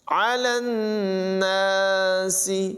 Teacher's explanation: نون میں جو ہے غنہ کریں گے، نون مشدد ہے، سین کی آواز میں سیٹی پیدا ہوگی۔